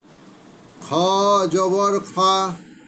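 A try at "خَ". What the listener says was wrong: জবর খা হবে না খ হবে কোনটা হবে বলেন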